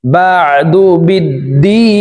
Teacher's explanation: দি 3 আলিফ টেনে নুনকে সাকিন করব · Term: আরজি